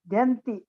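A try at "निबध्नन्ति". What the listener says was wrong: Na is there. Dhna. This dha is there. And na is there. Nibadhnanti.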